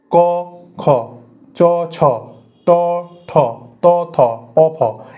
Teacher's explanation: ক খ চ ছ ট ঠ ত থ প ফ এতে কিন্তু ভোগাল করটা কম্পন হচ্ছে না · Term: অঘোষ বর্ণ